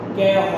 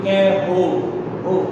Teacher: কেহ এটার শেষে হ আছে, ও এর মতো উচ্চারণ করতে হবে।